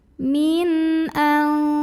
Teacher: Karena ada nun sukun yang ketemu sama huruf halqi atau huruf tenggorokan yaitu hamzah ya, yang a. Maka cara baca nun sukunnya dibunyikan dengan izhar atau jelas bunyi n-nya. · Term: izhar halqi